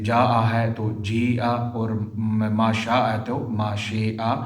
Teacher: جاء اور شاء جیسے کلمات جہاں بھی قرآن پاک میں آئیں گے تو وہاں پر بھی کیا کریں گے، امالہ کریں گے۔ جاء ہے تو جی اور ما شاء ہے تو ما شیء، یعنی امالہ کر کے کیا کریں گے، پڑھیں گے۔